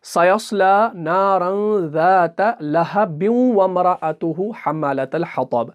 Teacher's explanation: हम बा और वाव को मिलाते हैं क्योंकि हम रवानी पढ़ रहे हैं, हम नहीं रुक रहे हैं।